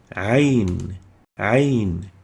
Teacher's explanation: Ayn comes from the deep throat. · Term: throat letter